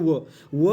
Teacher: दंतौष्ट म्हणजे काय, जिथं ओठ आणि दात, ओठ आणि दात या दोन अवयवांची मुवमेंट होऊन जो वर्ण निघतो, जो व्यंजन निघतो, त्याला आपण म्हणतो दंतौष्ट